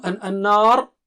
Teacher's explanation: ra is thick at the end · noon has shadda. That means you have to do gunna. Double stretch, nasal sound.